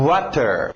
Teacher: Esse é um semivogal, saindo dos lábios para fora.